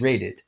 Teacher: raided a village raid the duck is an alveolar stop so the past tense ending it will take is a schwa followed by another alveolar stop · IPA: [-əd]